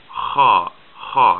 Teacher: Ha is like a very guttural H. It's like the H in Bach.